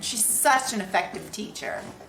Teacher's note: with the apostrophe S pronounced as a Z.